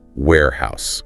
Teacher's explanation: remember the pronunciation stress on the first syllable